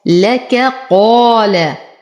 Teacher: ولو وصلنا لفصلنا الكاف عن القاف